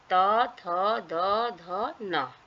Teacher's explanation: न में जीभ को दांतों से लगाकर उच्चारण किया जाता है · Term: दंतव्य न